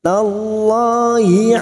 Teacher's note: Lam jalalah yang sebelumnya fathah kita baca tafkim.